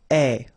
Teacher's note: And you pronounce it e. Remember, open e.